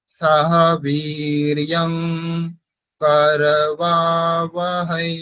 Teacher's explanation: সাহা বীর্যং, এখানে ঙ পড়তে হবে, ঙ, ক খ গ ঘ ঙ, তো এখানে অনুসারের উচ্চারণ হবে ঙ